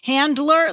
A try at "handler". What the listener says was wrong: Handler sounds like you're missing the D.